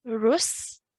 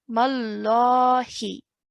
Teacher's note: We're not hanging around in our sound. Straight away join in the ra to the sin.